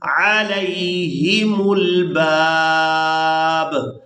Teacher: تو وقف کی صورت میں با کو ساکن کر دیں گے. پہلی با کو الف مدہ کی وجہ سے کھینچتے ہوئے دوسری با ساکن کے ساتھ ملائیں گے